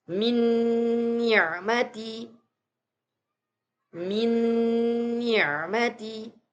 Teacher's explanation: Nun sukun bertemu dengan huruf nun. Sama juga suara nun sukunnya dileburkan atau dimasukkan ke suara huruf nun.